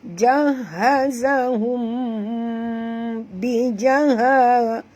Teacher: mim mati bertemu ba, ikhfa syafawi, masukkan bunyi mim ke dalam ba disertai dengung